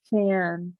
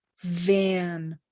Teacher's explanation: So it's voiceless. V is voiced. It has that vibration, right?